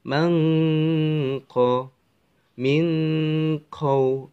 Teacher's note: maka di dalam membacanya itu mendengung sepanjang 2 harokat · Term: ikhfa